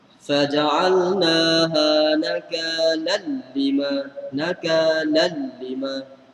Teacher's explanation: tanwin itu masuk dalam tanpa dengung. Dan nun ataupun tanwin tak bunyi.